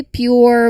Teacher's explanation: It's about blending the consonant with that initial Y sound before the vowel. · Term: PJ blend